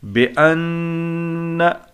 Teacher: नाक में आवाज़ छुपाना, मुकम्मल छुपाना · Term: गुन्ना